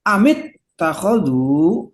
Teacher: Jadi ittakhadhu itu asalnya begitu ya, ittakhadhu, maka nggak bisa dibaca ittakhadhu alihatam minal ardi hum yusharun, nggak bisa, harus mengikuti tajwid amit takhadhu, nah gitu tuh ya, nggak boleh dibaca amat takhadhu atau amut takhadhu, nggak ada, karena yang munasabahnya semuanya kasroh